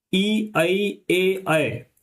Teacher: इनका जो उच्चारण होता है वो जीभ के अगले वाले पार्ट से, जो आपका चोंचदार पार्ट होता है जीभ का, उससे होता है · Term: अग्रभाग